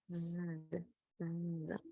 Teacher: para la Z, la misma posición de lengua y labios, la única diferencia es que el sonido de la Z es fuerte como el zumbido de una abeja. Entonces posicionamos igual para Z, pero lo único que fuerte, vibrante.